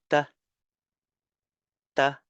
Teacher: The voiceless one is t the There's still um t a tap a tap by your tongue on the teeth, the back of the teeth, but you don't need to do it like a right where there is air coming out.